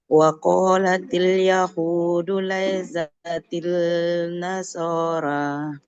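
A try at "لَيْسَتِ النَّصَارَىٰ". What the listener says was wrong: Oke, bukan laisatil ya. Oke, lam sukunnya tidak dibaca karena setelahnya ada tasydid. Laisatin nasoro.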